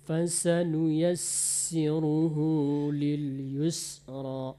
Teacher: Sin kalau bertasdid dia diperbanyak anginnya fasanuyasiruhu Lil Yusro fasanuyasiruhuilro atas nama makhraj Sin jadi ya diperbanyak